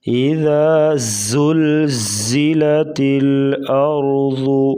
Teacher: اور آگے ہے زا، ذال اور زا میں واضح فرق کر کے پڑھیں گے۔ زا کو سختی سے پڑھا جاتا ہے، سیٹی جیسی آواز نکلتی ہے، اور ذال کو نرمی کے ساتھ۔ اذا زلزلت الارض، ارض را ساکن، اس سے پہلے زبر، را کو پور پڑھیں گے موٹا، اور ضاد موٹے حروف سے ہے اس لیے اس کو موٹا پڑھیں گے۔